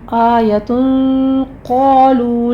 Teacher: اخفا یہاں پہ پر کیا جائے گا کیونکہ آگے قوف ہے، حروف مستعلیہ میں سے آ رہا ہے۔ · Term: اخفا حقیقی